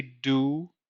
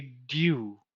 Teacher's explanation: So we have to remember that in the British accent, the oo sound very often begins with a y sound. So we don't say do, we say dew.